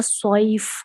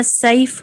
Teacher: जैसे अब हम पढ़ते हैं वह सॉइफ, स्वात मोटा है, हम वह सैफ पतला पढ़ेंगे